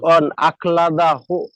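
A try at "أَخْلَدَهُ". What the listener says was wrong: শেষে হু পড়তে হবে না, শেষে ছেড়ে দিলে দাল হা জবর সাকিন হয়ে যাবে এটা। শেষে জবর জের পেশ, উল্টো পেশ, খাড়া জবর যা থাকবে সব সাকিন হয়ে যাবে।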